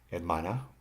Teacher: hermana, the stress is on the MA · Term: syllable stress